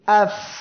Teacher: নিচের ঠোঁটের পেট উপরে 2 দাঁতের আগার সঙ্গে লাগিয়ে উচ্চারণের সময় যে বাতাসটা চালু থাকে সেটাই হলো হামস এর বৈশিষ্ট্য, অর্থাৎ অক্ষরটি উচ্চারণের সময় বাতাসটা জারি থাকবে। · ফা অক্ষরটি আমরা যখন উচ্চারণ করি আফ, এই যে বাতাসটা বের হচ্ছে এটা হলো আফ, এটা হলো হামস